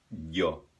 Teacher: ela é como se fosse uma I espremida no céu da boca